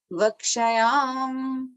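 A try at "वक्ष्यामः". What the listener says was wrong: Vakshyamaha. तो म के बाद वो जो दो डॉट्स है ना, that is visarga. Okay, that you have to pronounce it as maha. Vakshyamaha.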